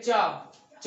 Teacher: जो जिह्वा होती है वो तालु के में टच हो जाती है, छूती है